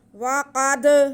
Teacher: قاف حروف مستعلیہ میں سے اور ساتھ میں دال ساکن، قاف کو موٹا کر کے پڑھیں گے اور دال پہ ہم قلقلہ کریں گے